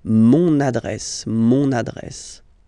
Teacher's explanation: you can hear now this little link, so you get to pronounce this N